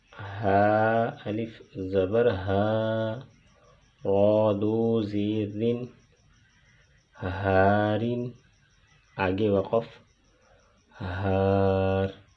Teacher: ہا الف زبر ہا کو ایک الف کی مقدار کھینچ کر پڑھیں گے کیونکہ یہ حروف مدہ میں سے ہے